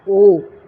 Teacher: फिर आगे है ओ और औ, तो ओ और औ में क्या हो रहा है कि कंठ और ओष्ठ, ओ और औ गले से और होठों से बोला जाने वाला वर्ण कंठोष्ठ कहलाता है